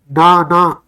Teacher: इनको बोलने में ना महसूस होता है कि नाक से भी वायु बाहर आ रही है